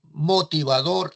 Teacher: cuando pronunciamos motivador, efectivamente la última sílaba es la tónica. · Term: sílaba tónica